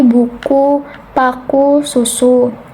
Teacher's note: tinggi, atas, belakang dengan posisi mulut yang tertutup menghasilkan bunyi seperti buku, paku, susu.